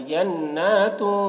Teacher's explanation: تنوین کے بعد حروف اخفا میں سے تا ہے تو یہاں پر اخفا کریں گے